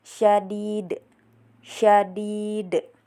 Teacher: Kemudian pada bagian ini juga ada hukum qalqalah kubra karena terdapat huruf qalqalah da berada di akhir dan dibaca harus dipantulkan dengan keras dan jelas